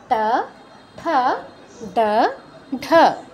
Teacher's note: জিউভাকে মূর্ধায় স্পর্শ করাতে হয় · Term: মূর্ধন্য বর্ণ